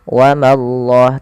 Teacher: Pada lafal Allah bila didahului dengan fathah maka Allahnya tebal. Wa mallah, tapi ma jangan ikut tebal.